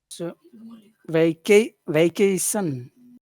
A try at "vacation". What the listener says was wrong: You're saying shun, you're going up. Shun should finish low. Cation. Cation.